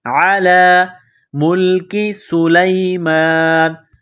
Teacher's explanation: لام کے اوپر کڑا زبر ہے، ایک الف کے لمٹ میں کھینچنا ہے۔